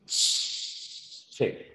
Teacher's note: O sea, con la africada, primero hay un cierre completo y luego el aire sale de manera continua